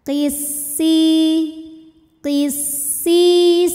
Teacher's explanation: mad thobii ziri sebab ada ya sukun yang sebelumnya berharakat kasrah maka huruf Sin ini kita panjangkan Cukup dua harakat saja